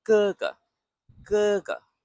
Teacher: So this ge is at the back, quick, no puff. And the second ge is light.